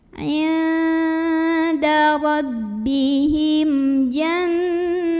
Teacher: Maka mim sukun ini kita bunyikan dengan jelas, bunyinya dan tidak ditahan. Inda rabbihim jannah. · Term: idhar syafawi